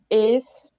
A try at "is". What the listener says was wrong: não is, com som de S. Faz o som de abelha assim, ó, z. Só faz o som de abelha, z.